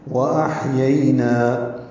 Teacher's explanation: واو ہونٹوں کی نا تمام گلائی سے ادا ہوگی، حمزہ سے حلق سے ادا کریں گے اور ہا سے ملائیں گے، ہا وسط حلق سے ادا کریں گے۔